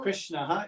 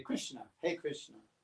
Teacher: the vocative case just drops the visarga